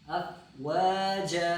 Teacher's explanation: يدخلون في دين الله في دين الله أفواجا أفواجا واو کو لمبا جا پھر جا یا جن. افواجا پھر جا کو بھی لمبا پڑھنا ہے چونکہ الف مدہ ہے